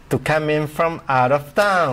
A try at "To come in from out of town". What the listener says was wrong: Okay, good, but hold the M here. To come in from out of town.